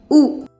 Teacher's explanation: ऊ का नाम उकार है। उकार को छोटा सा मुंह खोल के किया जाता है या हल्का मुंह के साथ हल्की हवा बाहर आती है।